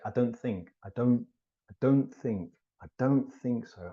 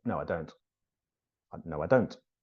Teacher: when I say don't I almost never pronounce the T when the sentence continues